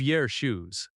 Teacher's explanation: American speech, your often reduces to yer.